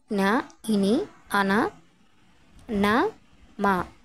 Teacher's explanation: ఇవి ముక్కు సహాయంతో పలుకుతాము కాబట్టి వీటిని అనునాసికాలు అని అంటాము